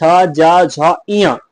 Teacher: इनका उच्चारण स्थान तालव्य है। यानी कि जीभ के ऊपर तालु से स्पर्श होने के कारण इन्हें तालव्य व्यंजन कह देते हैं।